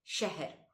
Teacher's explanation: शलगम वाला जो श होता है इसका उच्चारण जीभ के तालु को छूने से होता है। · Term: शलगम वाला श